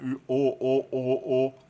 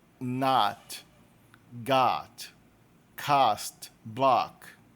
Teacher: É um som que está entre o O e o A. Ele não tem fechamento labial que o nosso O tem. O nosso O faz um biquinho na boca, né?